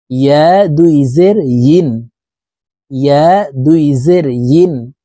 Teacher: ইয়ার উচ্চারণ জিহ্বার মধ্যখান থেকে পড়তে হবে।